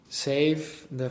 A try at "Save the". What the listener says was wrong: Save, not safe. Save.